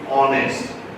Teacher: So you might be tempted to use a but if you look if you listen carefully you're not saying hest you know ha h is not being pronounced you're saying honest